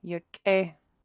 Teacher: you have a nice high tone, long EI after it